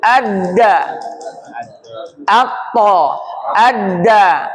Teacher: Dia mengeluarkan huruf to dengan pantul. Huruf dal dengan pantul. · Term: qalqalah